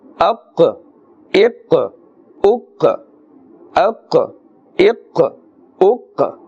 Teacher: Kaf has more of a flat sound, a thin sound, and qaf is pronounced with a full mouth because it is part of the huruf musta'aliyah and it is part of the huruf qalqala, the qalqala letters, and therefore you can hear that slight echoing or bouncing sound because this is the qaf with a jazm upon it